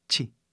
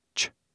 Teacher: Então, veio aqui, ch, e aqui, chi. Vê aqui no português, o chi tem um som de i no final, mas no inglês não. Tem som de ch, quase som de a no final, entendeu?